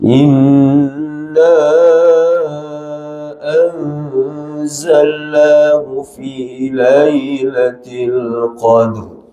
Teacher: dua harakat dengung empat harakat Mad Jaiz dua harakat ikhfa masuk dengung